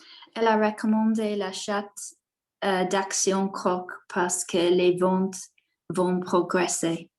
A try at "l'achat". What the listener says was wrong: Voilà, c'est l'achat. On ne prononce pas le T. Donc, l'achat.